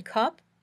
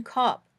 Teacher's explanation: when you say uh your tongue is right in the middle of your mouth where it is when you're relaxing and not talking